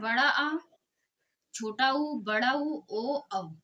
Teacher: और पश्च स्वर क्या होता है? जीवा के पश्च भाग को उठाकर स्वरों का उच्चारण करना